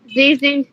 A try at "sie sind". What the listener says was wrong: ये जी है, ये सी नहीं है। हाँ जी, एस की आवाज, हाँ जेड की आवाज, ठीक है ना, सही है, फिर दोस्त सही प्रोनाउंस किया।